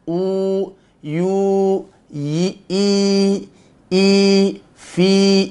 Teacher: Kalau ya maddiyah, makhrajnya sudah kita pelajari, yaitu al-jauf. Ya, makhrajnya al-jauf.